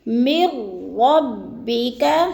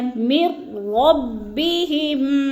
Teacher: میم کو را کے ساتھ ملا کر مدغم کریں گے یعنی ادغام کریں گے بغیر غنہ کے، جیسے من ربک۔